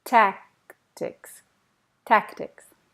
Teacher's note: The C is almost not there.